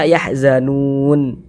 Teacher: Kalau membaca Al-Quran berhenti di huruf yang tidak dibaca panjang, hurufnya kita sukunkan. Maka ini kita berhenti di huruf nun tidak dibaca panjang, maka hurufnya kita sukunkan. Sehingganya kita baca yahzanun.